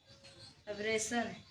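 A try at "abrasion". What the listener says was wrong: सन नहीं, अब वो TION सन होता है, ये जन हो गया।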